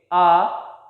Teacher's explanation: आप vocal cords में vibration महसूस करेंगे और मुंह थोड़ा सा खुल जाएगा और हवा विदाउट एनी रेस्ट्रिक्शन बाहर आ जाएगी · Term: वोवल साउंड्स